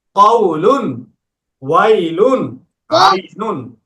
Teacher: জবরের পরে যজমালা ওয়াও অথবা জবরের পরে যজমালা ইয়া আসলে লিন হবে, লিন হলে নরম করে তাড়াতাড়ি পড়তে হবে।